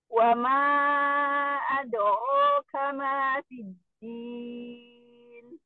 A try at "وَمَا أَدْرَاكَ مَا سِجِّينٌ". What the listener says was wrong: Coba di akhirnya jangan direndahin, kemudian kol-kolahnya jangan diputus.